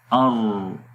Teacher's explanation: را میں کپاہٹ سی آ رہی ہے اور لاسٹ میں صفت انحراف ہے۔ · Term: صفت تکریر